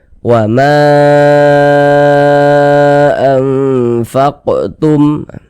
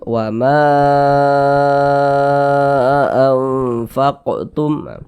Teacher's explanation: mad tabi'i yang berjumpa dengan huruf hamzah di lain kata, maka menjadi mad jaiz munfasil. Panjangnya itu 4 sampai 5 harokat. Jadi boleh 4 harokat, boleh juga 5 harokat panjangnya.